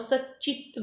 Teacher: Next देखिए सत धन चित, सत धन चित, यहाँ पर जो है तकार है तो इसका जो है चवर्ग के अंतर्गत, तवर्ग का जो है चवर्ग में परिवर्तन करेंगे तो यहाँ च आ जाएगा, तय के स्थान पर च हो जाएगा और सचित बन जाएगा इस प्रकार से।